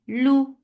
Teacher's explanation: For dhamma circular lips, the sound is light and short.